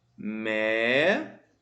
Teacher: A antepenúltima sílaba é a mais forte. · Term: proparoxítona